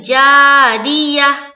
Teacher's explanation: زیر کی صورت میں ہر حال میں را باریک ہوگی